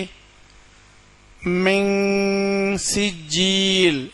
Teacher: நூன் சத்தம் கொடுக்காம இங் சத்தம் கொடுத்து ஓதணும் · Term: இஹபா உடைய சட்டம்